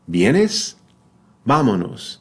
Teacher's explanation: notice my two lips coming together